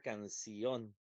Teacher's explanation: La sílaba tónica va a estar en sion, para que diga canción.